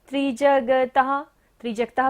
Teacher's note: विसर्ग है, तो यहाँ पर दोबारा से आपको सांस का विसर्जन करना है